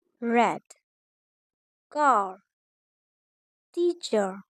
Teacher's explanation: R is rhotic approximant. Tongue is raised and pulled back. It may be retroflex or bunched.